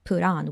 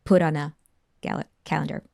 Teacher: the verb put ends with t and when followed by vowel on put on t turns into a flap T put on we hear this du du sound put on a